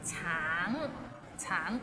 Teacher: the end has a little ng, so it's a bit of nasal sound